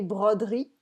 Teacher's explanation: I sometimes don't say the E in broderie because this is the way that I would say it in everyday spoken French